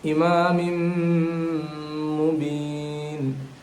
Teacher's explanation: The meme with shad, we have to give the gunna like noon with shad.